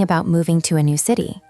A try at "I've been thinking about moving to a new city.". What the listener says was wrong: You said every word clearly. But native speakers blend words. Listen to how I say I have been. It sounds like I've been, and moving to sounds like moving to. I've been thinking about moving to a new city. It goes up and down.